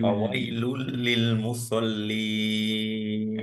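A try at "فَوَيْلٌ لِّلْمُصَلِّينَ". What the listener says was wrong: এই তো মাশাল্লাহ, সদ খুবই সুন্দর হয়ে গেছে,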